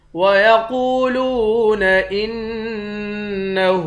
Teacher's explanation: حمزے کو نون مشدد کے ساتھ ملا کر نون پر غنہ کریں گے، ہاں پر الٹا پیش ہے، ایک الف کے مقدار کھینچ کر پڑھتے ہیں۔